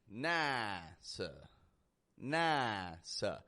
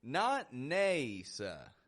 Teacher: we use a wide A, the ah, instead.